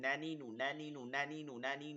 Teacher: জিহ্বার আগা তার বরাবর উপরে তালুর সঙ্গে লাগিয়ে নুন